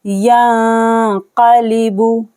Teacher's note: नून साकिन के बाद क़ाफ आ रहा है तो हमें यहाँ पर करना है इक़फ़ा। नून की आवाज़ को छुपाएंगे, गुन्ना करके पढ़ेंगे।